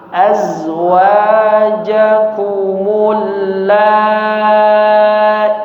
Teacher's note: Hati-hati azwajakumul la-nya dipanjangkan 5 harakat, i-nya 2 harakat saja. Azwajakumul la-i-tudha, ya, i-nya 2 harakat.